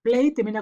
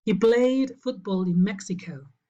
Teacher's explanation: Play termina con un diptongo, es voiced.